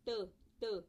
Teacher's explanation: आपको जहां पे आपकी जुबान टच हो रही है ना ऊपर, उसको अल्व्यूलर रिज कहते हैं। तो that's why these are called अल्व्यूलर stops, ठीक है।